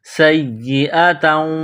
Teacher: سین میں سیٹی کی آواز، سین کو یا کے ساتھ ملانا ہے، یا کو دبانا ہے، یا میں سختی کرنی ہے۔